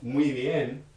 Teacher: in between two vowels, you'll find that that B consonant is actually not a B at all. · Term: approximant